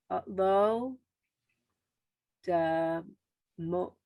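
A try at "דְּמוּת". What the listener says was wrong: Not da, just d.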